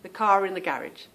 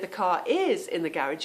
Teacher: if I see a car and I'm talking about it in the garage you will hear the r